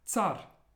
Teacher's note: Center but this next word is Tsar and you'll notice that the ER at the end really is almost like just a tap and it's a little bit more breathy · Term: soft pronunciation